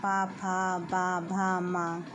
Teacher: प वाला बोलकर आप देख सकते हैं। प भ म तो ये सभी जब हम बोलते हैं तो ओष्ठ हमारे आपस में टच करते हैं